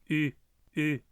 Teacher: Essa letra é uma vogal e pronunciada com um som de U, como um I com biquinho, igual ao U do francês ou o U com trema do alemão